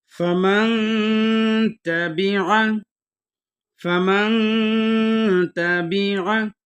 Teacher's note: میم کو نون کے ساتھ ملا کے پڑھیں گے اور نون کے اوپر غنہ بھی کریں گے